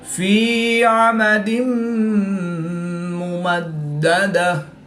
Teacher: یا ساکن سے پہلے زیر ہے تو یا مدہ ایک الف یعنی 2 حرکات کے برابر کھینچ کر پڑھیں گے. 2 زیر کی تنوین کے بعد میم حروف یرملون میں سے ہے تو یہاں پر ادغام مع الغنہ ہوا یعنی غنہ کر کے پڑھیں گے.